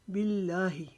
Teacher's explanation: ہا کی آواز حلق کے نیچے سے نکالیں گے، جیسے ہم تکلیف سے اپنی آواز نکالتے ہیں۔